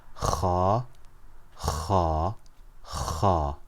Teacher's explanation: It comes from the top part of the throat.